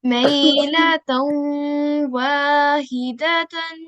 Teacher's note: we need to do a 2-second nasal sound whilst joining the ta with the tan to the waw mushaddat